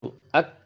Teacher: ketika kita mengucapkan huruf kaf itu yang kita munculkan sifat sidahnya dulu